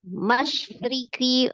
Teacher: Ri-nya kasroh berarti ro-nya dibaca tipis.